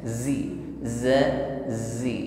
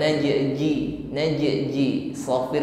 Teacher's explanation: huruf Zain disertai dengan sifat asofir harus ada desisnya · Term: as-safir